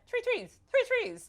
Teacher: he can't pronounce TH because of the Italian